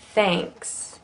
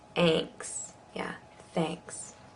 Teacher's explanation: You'll notice how it gets kind of nasal because of the N.